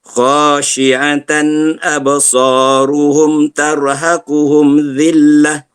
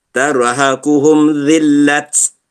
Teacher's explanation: Okey, ayat yang ke-43 kita akan berjumpa dengan wakaf ta marbutah. Ta marbutah kalau diwakafkan dia bertukar menjadi huruf ha.